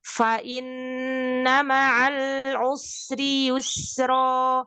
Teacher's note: Ketika dia tasdid nun itu ada namanya gunnah musyaddadah, tapi tidak boleh ditekan. Jadi dia agak ditahan saja lebih lama sedikit ya. Fa innama, jangan fa inna itu ditekan.